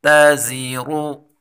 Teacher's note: تا باریک حروف ہے، زا تیزی والا حروف ہے اور را کے اوپر پیش ہے، اس کو ہم پر پڑھیں گے